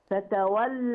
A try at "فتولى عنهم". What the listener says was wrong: مفيش ألف. فتولى عنهم، لا فتولى، لا لا فتولى عنهم.